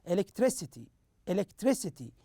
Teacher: You notice the third syllable here is stressed more than the other syllables. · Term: third syllable stress